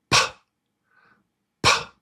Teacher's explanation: It doesn't vibrate. There's no vibration.